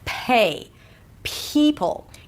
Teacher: The P sound is usually aspirated in American English when it appears at the beginning of the word or at the beginning of a stressed syllable, as in the word pay. So it feels like you have a little H right after.